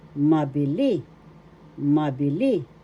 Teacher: The accent is in the third syllable.